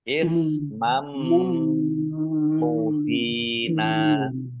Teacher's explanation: Fathah tanwin bertemu dengan huruf mim, bacaan itu gom bi huna. Masuk dengan mendengung, yaitu mendengung mim. Ditandai mimnya ada tasdidnya, biar tampak dengungannya, maka ditahan dua harokat.